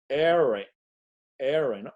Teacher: la producimos con la lengua haciéndola como curveada como si la punta la dobláramos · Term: la era del inglés